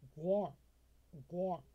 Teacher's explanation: これも▁TH▁の発音で濁らせてゼア